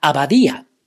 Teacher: Abadía is a word that has the stress on the vowel I.